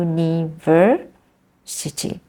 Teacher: the stress is in the university the third syllable